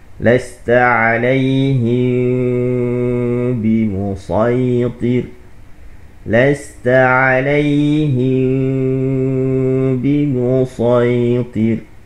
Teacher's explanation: dalam bab ikhfa syafawi ini cara pembacaan dia kita dengung bibir kita tak rapat. Tak rapat bibir kita tu sikit a seolah-olah nampak macam rapat.